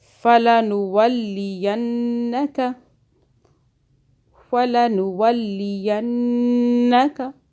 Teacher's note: نون جو ہے مشدد گنہ ہو رہا ہے 2 سیکنڈ کا